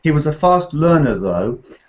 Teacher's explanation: the though is dropping tone